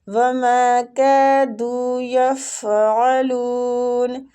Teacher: ما میم کے آگے الف مد ہو رہی ہے، اس کو تھوڑا سا کھینچیں گے ، کاف کو بھی کھینچیں گے، دو کو بھی کھینچیں گے،